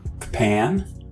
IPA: kpæn